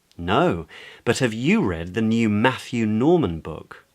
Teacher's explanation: So the new piece of information in that example was the new author. So it's the author's name that gets the stress in the sentence because it's the new information